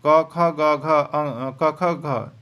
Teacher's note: यानी क वर्ग का उच्चारण स्थान कंठ होगा